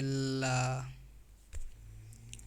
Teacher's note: जिस व्यंजन के उच्चारण में जीभ श्वास वायु के मार्ग में खड़ी हो जाती है और श्वास वायु उसके बगल से निकल जाती है, पार्श्विक व्यंजन कहलाती है, जैसे ला।